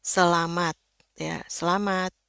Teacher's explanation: Ya, itu bunyinya lebih tinggi nadanya ketimbang A orang Indonesia. Karena orang Indonesia itu A-nya kita ngucapin itu lidahnya semuanya di bawah dan rileks banget. Makanya itu kedengarannya santai.